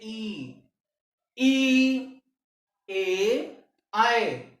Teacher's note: हरस्व ई, दीर्घ ई, हरस्व ए, दीर्घ ए का उच्चारण अग्र जीभ के अग्रभाग से किया जाएगा